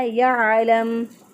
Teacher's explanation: आइन को वस्ते हलक से अदा किया, लाम को नरमी से अदा किया। यअलम। मीम जो है वक़फ़ की सूरत में पहले ही साकिन है, तो लिहाजा यहाँ पर कोई तब्दीली वाक़या नहीं होगी।